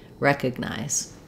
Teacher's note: but your length happens on the first syllable wreck recognize and that middle syllable letter O is going to say the uh sound vowel schah because it's unstressed it's a reduced vowel that goes by quite quickly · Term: vowel schwa